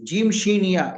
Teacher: उसके लिए मैंने बताया था ये जुबान का बीच का हिस्सा ऊपर के तालों में लगाना है आपको। जीम शीन या जीम शीन या में अगर आप जुबान के बीच के हिस्से को ऊपर के तालू में लगाएंगे तो जीम शीन या अदा होता है